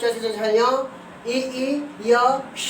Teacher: च वर्ग अर्थात च छ झ ञ, ई य श का उच्चारण स्थान तालु है।